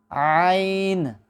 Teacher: عین جو ہے عزیزان محترم یہ بھی حروف حلقی میں سے ہوتی ہے، یعنی وہ حروف جو حلق سے ادا ہوتے ہیں تو ان میں سے ایک عین بھی ہے۔ عین اور حا دونوں کا ایک ہی مخرج ہوتا ہے، یعنی یہ حلق کے درمیان سے ادا ہوتی ہے